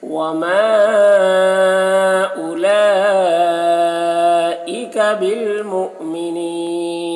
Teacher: مؤمنین، یہاں پر حمزہ ساکنہ ہے، جھٹکا لگے گا